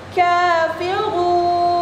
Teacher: Ka panjangnya 2 harakat, maka hukum bacaannya adalah mad asli